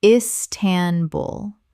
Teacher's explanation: Three syllables with the stress on the final syllable.